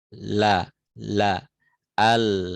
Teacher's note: suaranya itu keluar dari pinggir lidah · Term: huruf lam